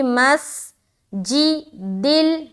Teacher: میم کو سین میں ملائیں گے، سیٹی کی آواز ظاہر ہوگی